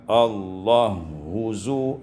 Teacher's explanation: diidghamkan ha pada ha dengan Idgham Kamil